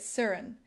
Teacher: Notice how we often drop the t sound in words like certain and make it sirin.